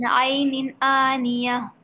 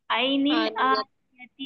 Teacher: جو گولتا تھی وہ ہائے ساکنہ بن جاتی ہے وقف کرنے پر